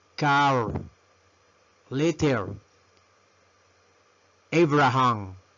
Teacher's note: pronunciamos la R subiendo la lengüita al paladar superior y pronunciando la R